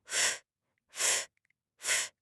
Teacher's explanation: There should be no vibration, no buzzing in your throat. It's just a quiet airy sound like. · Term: F sound